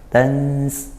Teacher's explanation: Tansa nun sukun bertemu sin, ikhfa haqiqi dibaca samar dan dengung juga.